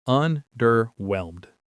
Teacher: The stress is on that last syllable.